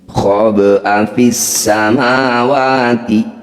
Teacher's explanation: bunyi ba sukun ini dipantulkan, tapi jangan berlebihan. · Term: qalqalah sughra